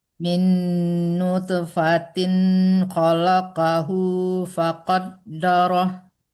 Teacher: Tin nggak boleh lama-lama karena di hukumnya ilhar ya. Jelas gitu, nggak boleh terlalu tertahan di situ.